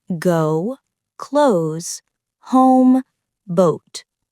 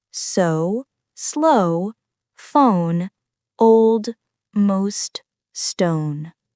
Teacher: begins with a mid-back sound, then moves slightly higher and rounded. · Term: long /oʊ/ sound